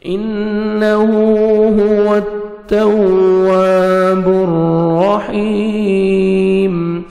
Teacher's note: واو پہ لپس کو راؤنڈ میں لے کے جائیں گے تاکہ واو اچھی طرح ادا ہو